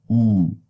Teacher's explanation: oo is a high back, tense, rounded